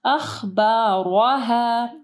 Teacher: را کو ہیوی پڑھنا ہے اور الف مدہ کو آخر میں پڑھنا ہے